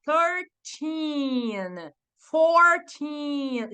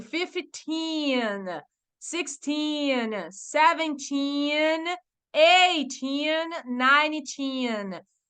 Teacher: você precisa forçar esse final é a sílaba tônica da palavra numérica ali né do 13 ao 19 precisa ser o final